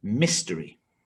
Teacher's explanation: three syllables stress on the first syllable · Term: word stress